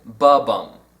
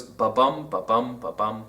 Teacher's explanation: stressed and unstressed syllables the first is a two- syllable Rhythm it starts with an unstressed syllable and is followed by a stress syllable